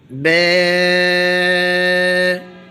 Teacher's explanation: ہونٹوں کی تری والی سائڈ سے با پڑھا جائے گا